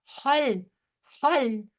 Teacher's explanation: خا موٹا ہوگا لیکن لام موٹا نہیں ہوگا